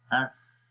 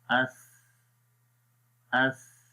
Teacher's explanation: नरमी के साथ आपने पढ़ना है और ज़ुबान की नोक को सनाया उलियों के किनारों पर भी लगाना है